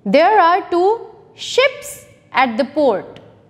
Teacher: So the sound of S, S and H will be merged. ये दोनों मिलकर एक sound produce करेंगे. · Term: digraph